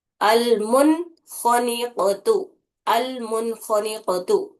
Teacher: نون کو صاف پڑھ رہے ہم بنا غننے کے اس کو ادا کر رہے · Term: اظہار حلقی